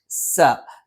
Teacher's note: നാവിന്റെ കൂർത്ത അറ്റം അതിന്റെ മുകൾ ഭാഗം രണ്ടു വരി മുൻപല്ലുകൾക്കിടയിലായി പിന്നിലായിട്ട് നിൽക്കുകയും നാവിന്റെ അറ്റം ചെറുതായി താഴെ മുൻപല്ലിന്റെ പള്ളയിൽ സ്പർശിക്കുകയും ചെയ്യും.